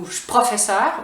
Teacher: So the je becomes ch like that.